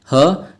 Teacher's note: ठीक है स्टूडेंट्स, जो ये इसका ह होता है ना, एक ह, ये महाप्राण में माना जाता है, लेकिन ये सघोष में माना जाएगा। एक अकेला ऐसा वर्ण है ह जो ये सघोष होता है और ये महाप्राण में माना जाता है